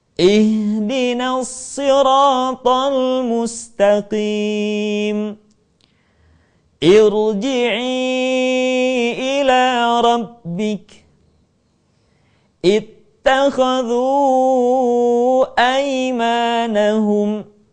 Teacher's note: maka kemudian Hamzah wasal dibaca dengan harakat i